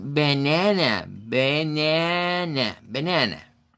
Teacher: Ahora tenemos también lo que sería las sílabas átonas en donde usamos el shua. Vocal neutra.